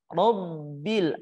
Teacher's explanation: Bukan karena kita memonyongkan bibir kita, ro, salah, tapi yang benarnya karena terangkatnya pangkal lidah kita. Ro, bil, huruf ba yang bertasydid dibaca, ditahan terlebih dahulu. Robbil, ada transisi ketika ba yang bertasydid, jangan sampai kita memutuskannya.